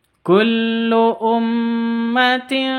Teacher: tanwin bertemu dengan ta bacanya samar disertai deng dengung atau samar didengungkan Kullu ummatin seperti itu karena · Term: ikhfa H Hakiki